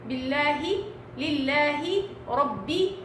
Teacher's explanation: لام لفظ الجلالة المرققة، يعني طلعيها لام صحيحة عادية ما فيش فيها اي نوع من التفخيم، اذا سبقت بكسر